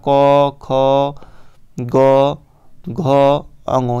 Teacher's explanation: क वर्ग पूरा एक कंठी व्यंजन होता है।